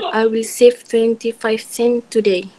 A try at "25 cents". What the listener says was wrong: If we have here 25 cents, you need to say the S clear, a little bit clearer, you know? Okay, 25 cents.